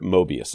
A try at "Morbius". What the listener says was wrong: Do you mean Morbius? there is an R in there, yes. Morbius.